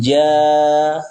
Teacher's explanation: Berikutnya huruf jim, ja, panjangkan dia 4-5 harokat. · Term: Mad wajib mutasil